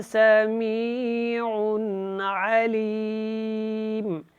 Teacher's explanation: عین کے اوپر 2 پیش ہیں، نون تنوین، اور یہاں پہ عین حروف حلقی میں سے ہے، تو یہاں آپ نے جو ہے وہ اخفا نہیں کرنا، اظہار کر کے پڑھنا ہے